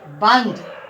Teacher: हम अनुस्वार का उच्चारण करते हैं तो हमें ना ध्वनि की आवाज सुनाई देती है। जैसे बंद, ना ध्वनि की आवाज सुनाई दे रही है, तो उच्चारण के आधार पर ये व्यंजन है।